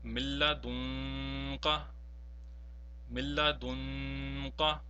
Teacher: Notice that we have prolonged, however, the second nun sakin in this example, and this is because of ikhfa